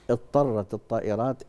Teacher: بسكن الضاد وادخل عليه الطاء